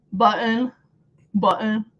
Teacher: instead of saying our T's we just stop it with our throat